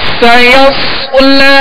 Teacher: سین کو سیٹی کی آواز میں سختی سے اور باریک پڑھیں گے · سایس آگے صاد ہے، صاد کو پر پڑھیں گے، ہونٹ گول نہ ہو اور سیٹی کی آواز پیدا ہو